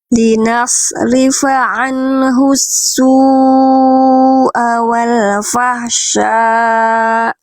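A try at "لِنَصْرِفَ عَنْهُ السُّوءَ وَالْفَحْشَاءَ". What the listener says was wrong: Oke, H kecilnya kurang duduk, kurang bunyi. Fahsya. H-nya tadi belum betul-betul neken di tengah tenggorokan. Jadi bunyi bisikan karakter H-nya kurang nampol, kurang pol ya. Wal fahsya.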